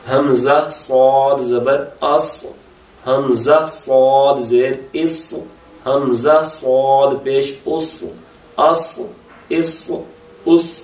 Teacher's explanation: زبان کی جڑ کے اٹھنے کی آواز محسوس ہو رہی ہوگی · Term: تھک لیٹر